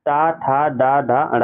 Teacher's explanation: मूर्धा से उच्चारित वर्ण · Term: मूर्धन्य वर्ण